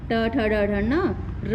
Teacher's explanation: ट ठ ड ढ ण र और श इनका उच्चारण स्थान हमारा मुर्धा है